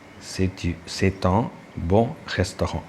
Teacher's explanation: that final letter T is laced with the vowel, first vowel in en.